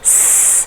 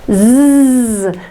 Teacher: The mouth is doing the same thing, and again, there is less contrast, but one is a voiceless sound and one is a voiced sound.